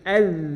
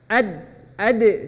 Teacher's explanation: kalau zal ujung lidah bertemu dengan digigit sedikit ujung-ujung gigi seri